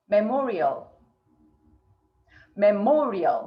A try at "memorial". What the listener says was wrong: Memorial. So a lot of folks don't get the first and second syllable very clear. It's not memorial, it's memorial.